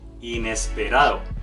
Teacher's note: acento en la penúltima sílaba